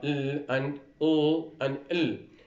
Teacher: the tip of the tongue will be in contact with the alveolar ridge. When producing L, the center of the mouth is blocked, is closed. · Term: laterals